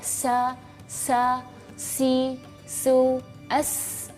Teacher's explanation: sifat-sifat huruf sin adalah hams. Hams itu berdesis lepas.